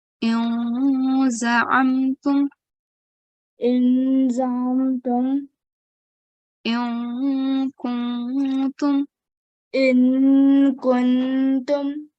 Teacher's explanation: don't say the noon fully. We are doing ikhfa, concealing the sound of noon